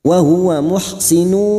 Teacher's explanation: terdapat duma tanwin yang bertemu waw namanya idgham bi gunnah siap masuk dan mendengung